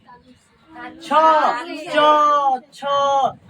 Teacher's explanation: जो स्पेस होता है उसको हम लोग ताल कहते हैं तो च छ ज ज का उच्चारण स्थान किससे हो जाएगा तालू से